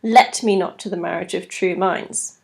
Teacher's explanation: rather than having the D Dum D Dum Rhythm we've got a stress on the very first syllable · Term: trochaic substitution